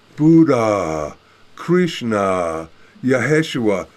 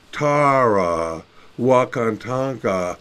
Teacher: you find this elongated vowel sound of ah found in all these different traditions